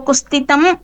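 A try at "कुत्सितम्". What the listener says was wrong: Kutsitam, not Kustitam. Kutsitam Roopam. Okay. Takara and then Sakara.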